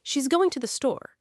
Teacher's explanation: The two the becomes almost a single blurred sound, to the. And the stress lands on going and store. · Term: content words